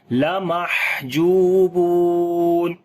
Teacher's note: ہا کے اوپر صفت ہمس کریں گے، سانس کو جاری کریں گے، جو کو لمبا کریں گے، واو مدہ ہے، واو کو بھی لمبا کریں گے، واو مدہ ہے یہاں پر بھی.